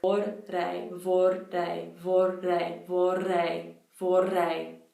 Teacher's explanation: My tongue just was so tired of doing a double tap that it just rolled.